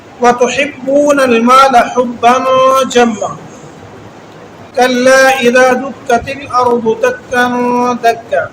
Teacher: غنّے اس لیے ہو رہے ہیں کہ یہاں پر تنوین ہے اور آگے حرف حلقی نہیں ہے